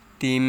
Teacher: ওয়া লি উ তিম, মিমের উপরে তাসদিদ আসছে তাই এটা ওয়াজিব গুন্না, এখানে এক আলিফ পরিমাণ গুন্না করে পড়তে হবে। তিম, একটু সময় নিয়ে পড়তে হবে।